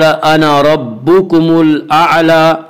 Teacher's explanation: रब्बुकुम की रा को पुर पढ़ेंगे। इसका कायदा है कि रा के ऊपर ज़बर और पेश आए तो रा को पुर पढ़ेंगे।